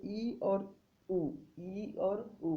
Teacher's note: उ बोलते हैं तो मुंह का जो हिस्सा क्या होता है दोस्तों, गोलाकार हो जाता है, इसीलिए समृद्ध स्वर कौन कौन से हैं, ई और उ है। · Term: संवृत स्वर